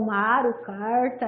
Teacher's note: aquela variação do tipo fonológico do som que eu trabalho com r o famoso R retroflexo